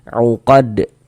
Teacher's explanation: qalqalah kubra karena kita berwaqaf atau berhenti di huruf qalqalah uqadah mantul uqad menjadi qalqalah kubra.